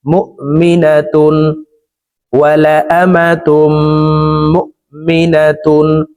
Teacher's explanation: তানউইনের পরে ইজহারের 6 হরফের একটি হরফ খ আসছে, এই কারণে এই তানউইন ওয়ালা তাটি গুন্নাহ ছাড়া স্পষ্ট করিয়া পড়ব